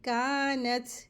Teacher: ता के ऊपर जब सुकून होती है तो उसको हम्स के साथ पढ़ते हैं